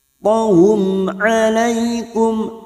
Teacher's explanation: mim sukun bertemu ain idhar safawi, mim sukun dibaca jelas tanpa mendengung